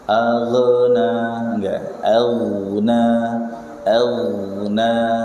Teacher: Kita dituntut untuk melafadzkan dengan tebal. Jadi posisi pangkal lidah mau enggak mau dia naik karena termasuk jajaran huruf-huruf isti'la